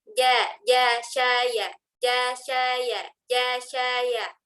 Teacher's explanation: tempat keluar huruf jim itu tengah lidah menempel ke tengah langit-langit atas sehingga melafazkan huruf jim itu lebih lembut daripada huruf J.